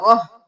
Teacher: ता को हा में बदल देंगे, तनवीन भी गिर जाएगी, रह करेंगे, रा ज़बर हा, रह, मुज़र्रा।